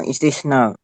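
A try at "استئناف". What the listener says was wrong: Istinaf, bukan istisnaf. Istinaf.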